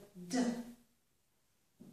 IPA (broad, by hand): d